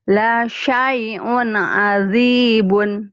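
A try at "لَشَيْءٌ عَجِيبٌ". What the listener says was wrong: Biasa aja keras. Manja amat ya jimnya. Ajib. shin. La syai'un shin. La syai'un ajibun. Ya, dilatih ya shin ya.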